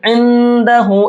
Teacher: इस नून के अंदर इख्फा करेंगे, यानी कि नाक में छिपा करके पढ़ेंगे